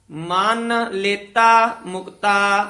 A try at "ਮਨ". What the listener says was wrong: ਇਹ ਮਨ ਥੋੜਾ ਜਿਹਾ ਕਸ ਕੇ ਬੋਲਣਾ ਹੈ। ਮਨ ਲੇਤਾ ਮੁਕਤਾ।